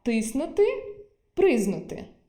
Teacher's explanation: «к» випадає у звукосполученнях «зкн» та «скн»